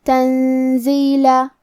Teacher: زے حروف الاخفاء میں سے ہے اور اخفاء کا معنی ہے چھپا دینا، تو ہم نون ساکن کو چھپاتے ہوئے اور غنہ کے ساتھ یہ حکم کو ادا کریں گے